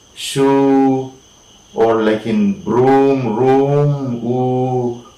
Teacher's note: When we say ooh, right, like in shoe or like in broom, room, ooh, we are using the back of the tongue, and we can say that ooh is, all right, back, right?